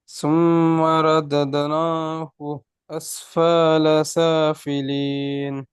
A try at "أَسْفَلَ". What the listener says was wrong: আসফা, ফাটা একটু টান হয়ে যাচ্ছে। ফায়ের উপরে জাবার হারাকাত, তাড়াতাড়ি পড়তে হবে।